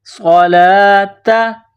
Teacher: پیدا کرنی ہے، صاد کو موٹا کرنا ہے، وَأَقِیمُوا الصَّلَاةَ، صَلَاةَ، لام کے اوپر کڑا زبر ہے، ایک الف کے برابر کھینچنا ہے · اوپر کڑا زبر ہے، ایک الف کے برابر کھینچنا ہے، صَلَاةَ، یہ نقطوں والی تا ہے، گول تا، اس کو باریک کرنا ہے